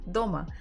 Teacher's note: So the first one is very strong, kind of hard, дома, and the second is secondary, not that strong.